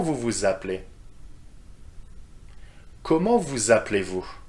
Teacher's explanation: please note the liaison between vu and the verb okay with the z sound